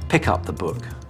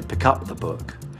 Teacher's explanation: And he'd say, pick up the book. So he'll put the stress on up instead of pick.